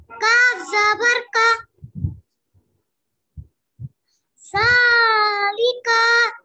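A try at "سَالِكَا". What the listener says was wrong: काफ जबर का लम्बा नहीं होता सालिका सालिका साह बोलिए जा सालिका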